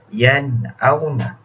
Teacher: berlaku pertemuan huruf nun mati dengan hamzah, maka dibaca dengan jelas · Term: izhar